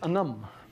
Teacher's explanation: the word for dog is stressed on its second syllable